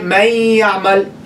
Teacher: you're dropping the noon, stressing the ya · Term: idgham with ghunna